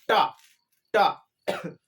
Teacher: आप बोलिए टा, टा। जब भी आप टा बोलोगे तो ऊपर पहले जीभ छिलेगी, फिर झटके से ही नीचे गिरेगी। आप बिना गिराए नहीं बोल सकते। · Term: मूर्धन्य